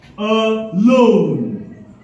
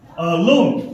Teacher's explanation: We put the stress on the second syllable. Alone. So, it's an iambic pattern.